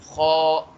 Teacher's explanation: یہ بھی حروف حلقی میں سے آتا ہے، حلق سے ہی ادا ہوتا ہے، لیکن یہ حلق کے اوپر والے حصے سے ادا ہوتا ہے